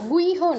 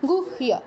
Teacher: আমরা আগে হ উচ্চারণ করব, পরে ইয় উচ্চারণ করব। গুহ্য, গুইহ নয়, গুহ্য।